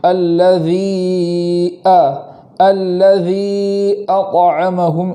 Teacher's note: الذی کے اندر مد کریں گے، مد کھینچنے کے بعد آگے والے کلمے کی شروعات میں جو حمزہ ہے اس حمزہ کو خوب جھٹکے کے ساتھ پڑھیں گے